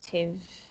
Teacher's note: Porque a sílaba tônica é a primeira.